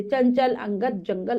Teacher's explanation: और फिर होता है अनुनासिक आ पर चंद्रबिंदु लगा है और विसर्ग आ पर दो छोटे-छोटे बिंदु लगे हैं। अनुस्वार यानी कि बिंदु। इसका उच्चारण नाक से होता है।